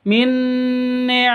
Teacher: nun mati bertemu dengan Nun cara bacanya langsung masuk ke Nun yang kedua